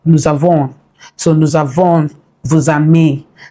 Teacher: so that S becomes Z. So that's where you hear the Z part of it. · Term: liaison